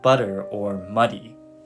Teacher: your tongue lightly Taps the roof of your mouth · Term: soft t or d sound